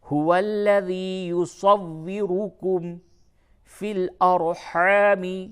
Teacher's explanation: واو مشدد ہے، سختی کے ساتھ اسے ملائیں گے